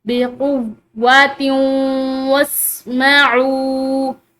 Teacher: एक हर्फ वाव आ रहा है, तो यहाँ पर जो है इस ता की तनवीन का जो है अगले हर्फ के साथ मिलाकर गुन्ना, यानी कि गुन्ना के साथ इसको मिलाकर पढ़ेंगे , जिसको इदगाम बिल गुन्ना या इदगाम नाकिस भी कहते हैं,